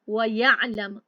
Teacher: واو کا اظہار ہو گیا ہے، میم کا بھی اظہار ہو گیا، اگلا حرف بھی کلیئر پڑھا جا رہا ہے